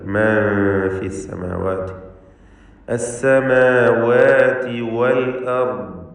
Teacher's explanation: അലിഫുകളെ ശ്രദ്ധിക്കുക, എല്ലാ അലിഫുകൾക്കും തർക്കീഖാണ്.